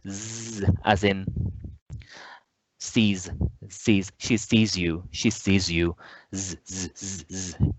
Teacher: You can hear the buzzing of my voice very easily and very clearly.